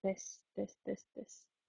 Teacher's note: jūs vienkārši arī ieliekat mēli starp zobiem un piedodat klāt balsi